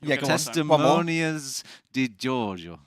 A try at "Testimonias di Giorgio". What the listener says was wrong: You're getting an N in the last word. You just keep making it up every time.